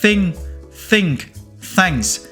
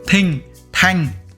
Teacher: bạn đưa lưỡi giữa hai hàm răng, sau đó xì hơi ra